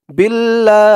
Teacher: এই দোয়াটি এখানে শেষ করার কারণে এখানে 3 আলিফ টান দিতে হবে। 3 আলিফ টান দিয়ে এই হাকে ধরবে।